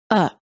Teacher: the vowel within the unstressed syllable is reduced and becomes a neutral short vowel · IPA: /ə/